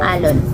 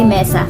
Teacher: walang Naririnig na impit sa pagbigkas ng mga ito